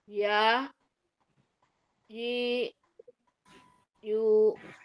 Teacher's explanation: Tempelin dulu ee tengah lidahnya baru dibuka.